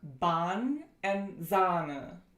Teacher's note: It's the long counterpart to the sound we just went over. So it's a long, low, central, unrounded, lax vowel. A couple examples of the long a are Bahn and Sahne. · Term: long ah